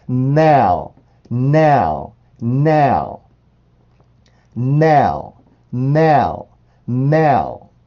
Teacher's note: 음절의 끝에 있을 때, 모음의 뒤에 있을 때는 dark L이라고 했었으니까. 그래서 L 발음에서 혀를 띄워서 L 발음으로 가다 보면 내가 의도치 않은 소리가 하나가 생겨나게 된다. 그 소리를 슈아로 발음을 표기하는 사람도 있고 표기하지 않는 사람도 있고 근데 저는 표기하지 않고 설명만 드립니다.